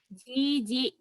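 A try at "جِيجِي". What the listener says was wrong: Bukan. Jiji penekanannya. Jiji tekan di yang kedua. Jiji.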